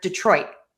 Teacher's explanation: I'm marking my T. I'm touching the tip of my tongue to the back of my top front teeth where the skin and the teeth meet on the roof of your mouth. I'm just not letting that puff of air go out. · And it doesn't sound like there's a T.